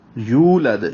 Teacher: یا کو واو سے ملائیں گے، 2 حرکات لمبا کریں گے، دال پہ قلقلہ ہے لد. اور یہ وقفاً وصلاً لد اور لد ان دونوں پہ قلقلہ ہی ہے.